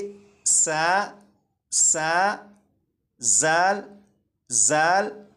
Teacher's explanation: अब मैं इन दोनों रूफ को जबान दांतों से लगाए बगैर पढ़ूंगा तो इनमें सीटी की आवाज आएगी